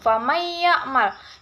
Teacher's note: idgham bigunah karena ada nun mati bertemu dengan huruf ya, cara membacanya masuk dengan mendengung